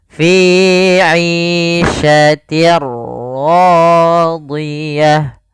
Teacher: Apa yang dimasukkan adalah suara tanwin. Awalnya fi 'ishatin, ketemu ra, maka langsung masuk di ra-nya, bunyinya langsung ke huruf ra. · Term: idgham bila gunnah